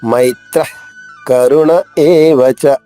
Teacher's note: మై దీర్ఘాక్షరము, రెండు మాత్ర కాలాలు పలకాలి. త్ర తాకి రావత్తు కాబట్టి మై పైన ఆఘాతం ఉంది.